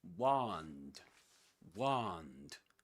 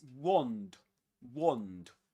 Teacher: Wand with a long a sound in American English, but in British English with a short o sound.